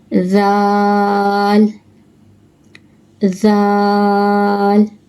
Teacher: Pronounce from the top of the tongue and the inner edge of the upper teeth.